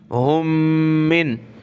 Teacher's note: दो मीम हैं तो प्लस करके एक ही पढ़ेंगे, नाक में आवाज़ पैदा करेंगे